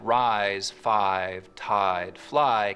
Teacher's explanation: words like rise, five, tide, fly keep their full I diphthong